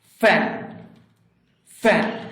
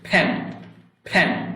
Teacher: এফ যখন আমরা উচ্চারণ করছি তখন উপরের দাঁত নিচের ঠোঁটের সাথে লাগছে, ফ্যান, ফ্যান। কিন্তু ফি যখন উচ্চারণ করছি তখন কিন্তু আমার দুই ঠোঁট একত্রিত হয়ে ফ উচ্চারণ হচ্ছে